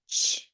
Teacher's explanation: It's a stop sound. It doesn't go on and on and on.